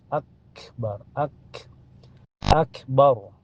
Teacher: tertahan dulu lalu keluar napas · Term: kaf sukun